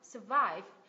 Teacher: Cái âm thứ nhất là âm schwa sao bởi vì mình stress vào âm thứ hai.